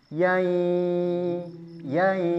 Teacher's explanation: Khoisyumnya keluar, rongga hidung, ya ada suara dari rongga hidung, ada dengungnya.